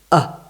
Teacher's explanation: the most basic sound you can make without without changing the shape of your mouth or constricting your throat